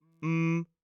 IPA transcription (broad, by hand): məθ